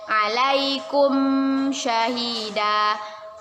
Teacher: mim sukun bertemu dengan huruf Syah Hai yaitu izhar syafawi kita baca jelas dari bibir